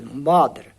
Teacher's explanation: O O tem um som de, assim, um A assim meio rouco